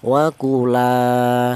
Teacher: ini cara bacanya dipanjangkan dua ketukan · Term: mad thobi'i, matobi'i